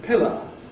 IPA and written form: ˈpɪlə (pillar)